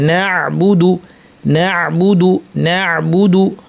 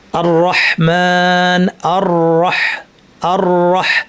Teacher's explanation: চাপ দিয়ে বাতাসকে বন্ধ করে আমরা আইন বলব এই জায়গায় একটু একটু সংকীর্ণতা সৃষ্টি হবে গলায় একটু আপনি ফিল